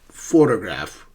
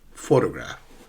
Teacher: Photograph is a noun, but the first syllable is stressed.